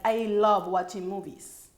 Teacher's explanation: It falls at the very end, but it goes up and down.